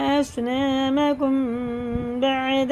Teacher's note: میم ساکن کے بعد با ہے تو یہاں غنہ اور اخفا دونوں ہوگا، یہ ہے اخفا شفی۔